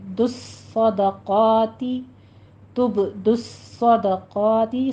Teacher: صاد کے اوپر سیٹی کی آواز بھی لانی ہے، تشدید کے ساتھ ادا کرنا ہے اس کو، اور سختی کے ساتھ آپ نے پور بھی پڑھنا ہے